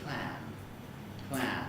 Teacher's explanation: it ends in an alveolar nasal